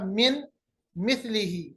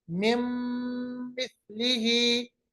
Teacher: नून साकिन को मीम के साथ मिलाएंगे, आवाज नाक के बांसे में चली जाएगी तो इदगाम बागुन्ना कहलाएगा